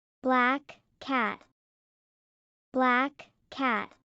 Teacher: The K in black and the K in cat are throat sounds. They connect.